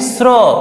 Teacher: ठीक है, फिर आता है कंठ और मूर्धा। कंठ और मूर्धा की सहायता से हम लोग बोलते हैं स्र